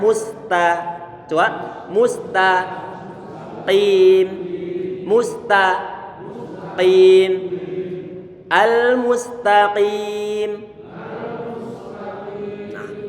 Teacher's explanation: saat saya membaca Ta ini tipis nih kemudian huruf qof dia tebal